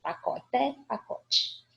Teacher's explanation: a gente pronuncia o ezinho com esse som de i